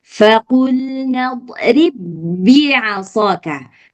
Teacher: Huruf yang ba pertama itu sudah dileburkan ke huruf yang kedua. Jadi udah hilang dia. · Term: idgham mutamatsilain